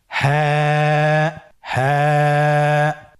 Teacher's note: হ্যাঁ হরফটি উচ্চারণের স্থান কণ্ঠনালীর শুরু হতে, অথবা আমরা যদি আরবিতে বলি হলকের শুরু হতে এই হরফটি উচ্চারিত হয়। কণ্ঠনালীর শুরু থেকে উচ্চারণ করুন হ্যাঁ।